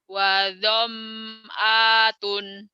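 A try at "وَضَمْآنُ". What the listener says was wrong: wa dham'atun tunnya salah wa zam'anun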